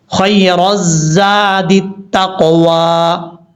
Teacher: یہاں پر را کے بعد الف لام ہے، اس کو چھوڑ دیں گے، را کو ڈائریکٹ زا کے ساتھ کنیکٹ کریں گے